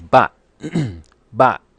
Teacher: that's the sharp falling tone with a heavy gloal stop bot which is fifth tone in